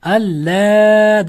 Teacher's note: alla deb cho'zib o'qiladi, la cho'ziladi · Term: mad munfasil